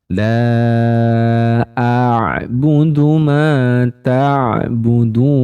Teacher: Nah, dari makhrajnya, teman-teman. Huruf ain ini termasuk dalam kategori wastul halqi atau bagian tengah tenggorokan.